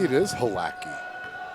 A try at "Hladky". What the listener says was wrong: It's Hladky. It's not a strong H. It's a soft, smooth Hladky. It's not Hladky.